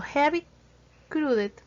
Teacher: un sonido de aspiración más suave que la J española, articulado como si se estuviera intentando empañar un espejo con el aliento